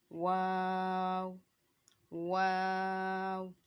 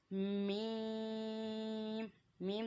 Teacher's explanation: वाव होंठों की गुलाई से अदा हो रहा है।